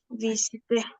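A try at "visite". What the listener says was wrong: ¿pronuncio la E final? No. Visit.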